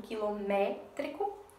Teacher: a sílaba tônica ela está na antepenúltima certo a sílaba mais forte essa daqui que tem um acento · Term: proparoxítona